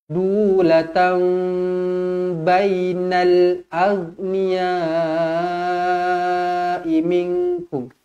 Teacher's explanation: Latam, mim kecil, ekornya ke bawah bertemu dengan ba, hukum dia iklab dengung dua harokat.